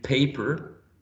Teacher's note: So p in paper, right, is voiceless. It is bilabial sound, and it's plosive.